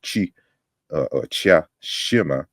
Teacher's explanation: the K is now palatalized to sh